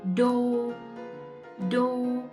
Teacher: Together with the D with the cross, we have Do, Do. And again, high rising broken tone.